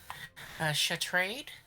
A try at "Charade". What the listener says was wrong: I'm pronouncing it like a cat in French. The T is silent.